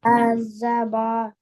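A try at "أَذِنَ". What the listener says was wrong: Azaba not. This is Noon. Hamza Zabar. Zal Zer. Join them. Read both together. Za not. This is not Zal Zabar Za.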